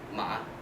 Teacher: And with a rising pitch pattern, then ma means hand.